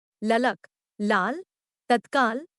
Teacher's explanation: वायु उसी ओर से बाहर जाएगी डॉट यह सघोष वर्त से अल्पप्राण पार्श्विक ध्वनि है